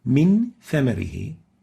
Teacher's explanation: So we have a nun sakina followed by a tha in 2 words, and we'll apply ikhfa by hiding the noon and then maintaining the ghunna for 2 units